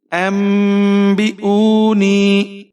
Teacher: अंबिऊनी, यानी नून साकिन के बाद अगर आपके पास बा आ जाए तो आपने यहाँ पर इक़लाब करना है। नून साकिन को आप मीम में बदल देंगे।